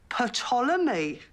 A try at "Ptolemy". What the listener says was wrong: The P is silent, as in psychopath. But it's from the ancient Greek. They had silent P's.